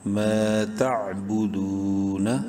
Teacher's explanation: واو مدہ ہے، دال کو ایک الف برابر لمبا کریں گے